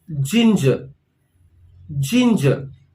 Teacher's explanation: again the stress is on the first part of the word